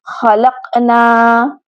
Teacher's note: خلقنا نون الف نا کے ساتھ ایک الف کے برابر لمبا ہوگا، اگر نون کو لمبا نہ کیا تو وہ خلقنا بن جائے گا۔